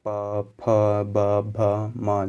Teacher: जब दोनों ओठ ऊपर नीचे वाले एक दूसरे से स्पर्श करते हैं तभी इन वर्णों का उच्चारण होता है। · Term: ओष्ठी व्यंजन